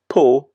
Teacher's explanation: a little shorter than the English O